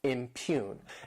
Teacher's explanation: This word has 2 syllables and the stress is on that second syllable,